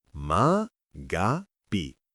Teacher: Con l'accento sulla seconda sillaba. La a è aperta, la g morbida e nella parlata veloce spesso diventa magapi con la caduta finale, ma l'importante è quel senso di slancio emotivo.